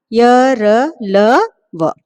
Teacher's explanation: इनका उच्चारण स्वरों और व्यंजनों के मध्य का है, इसलिए इन्हें अंतस्थ व्यंजन कहते हैं। इनका उच्चारण जीभ तालु दांत और होठों के स्पर्श से होता है।